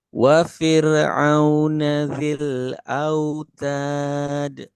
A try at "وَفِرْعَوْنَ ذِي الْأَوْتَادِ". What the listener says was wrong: Nah, tinggal roknya jangan mantul.